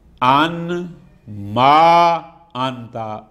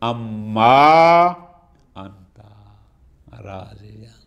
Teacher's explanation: ان کی نون کو میم میں ادغام کیا، کیوں؟ لتقاربہما فی المخرج، جو کہ مخرج میں یہ نون اور میم ان ما برابر برابر تھیں، قریب قریب تھیں، اس لیے تو یہ بن گیا ان ما انتا سے اما انتا راضیہ، ٹھیک ہو گیا۔